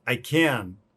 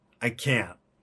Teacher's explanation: So the difference here is very subtle. Can't is a little shorter, a little more nasal. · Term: stop T